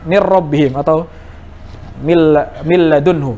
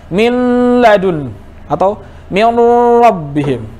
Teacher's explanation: Seperti kita di sini mir rabbihim atau mil ladunhu misalkan ya, idgham bi ghairi gunnah, ini idghamnya kamil ya, mir langsung mir masuk ke huruf ro, mil tanpa ada dengung